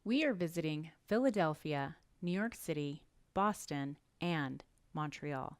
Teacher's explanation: we raise our pitch after the first item and each following item. Then drop the pitch at the end of the list.